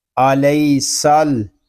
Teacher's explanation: سین میں سیٹی کی آواز آئے گی